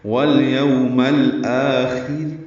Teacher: وقفاً را باریک پڑھیں گے کیونکہ خا کے نیچے زیر ہے. والیوم الآخر یہ را باریک ہوگی.